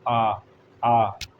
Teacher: open सबसे अधिक मुख खुलता है